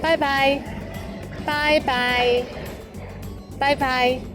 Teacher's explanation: But be careful to start with the first tone, bye, followed by another one in the third tone